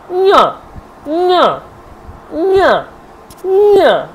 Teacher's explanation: কণ্ঠ লাগছে ও নাসিকাও লাগছে, দেখুন নিয়া, নিয়া, নিয়া, নিয়া, অর্থাৎ এই যে কণ্ঠ এবং নাসিকা দুটোকেই ব্যবহার করতে পারছি, এই জন্য একে বলা হচ্ছে কণ্ঠ নাসিক্য বর্ণ।